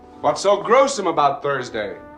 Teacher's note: It incorporates pronunciation features that were associated with upper-class prestige in the early 20th century, like the dropping of R at the end of syllables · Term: Transatlantic accent